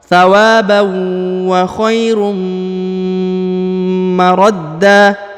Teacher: Wa khairum huruf tanwin harokat bertemu dengan mim, apalagi mimnya bertasdid, maka ditahan ditekan ya, didengungkan 2 harokat